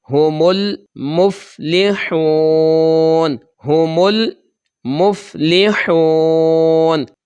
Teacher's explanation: جب ہم وقف کریں گے تو اوپر نون کا زبر ہے، یہ ہم ادا نہیں کریں گے، صرف نون کی آواز آئے گی